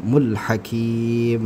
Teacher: mad adad lisukun panjang sampai 6 harakat